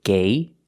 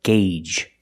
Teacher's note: Gauge. The first G is a hard G sound, followed by the long A, gay, and the second G is the J sound, like in juice and jump.